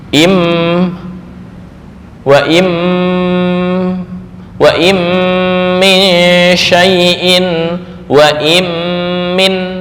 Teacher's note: Mudgham contohnya kayak misal non mati bertemu mim, im wa im min syai'in wa im min. Nah, itu mudgham, memasukkan nun ke huruf setelahnya.